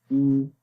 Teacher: تو جب پیش پڑھیں گے تو ہونٹ گول ہو جائیں گے لیکن لمبا نہیں کریں گے۔ مثال کے طور پر حمزہ پیش او، ٹھیک ہے؟